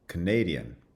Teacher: the stress shifts onto the second syllable, and the first syllable now has the schwa